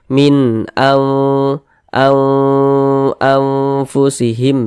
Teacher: tidak kami Tampilkan lagi di sini kita baca Nun Nun sokonnya kita baca samar dan disertai dengan dengungan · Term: ikhfa, ikhfa hakiki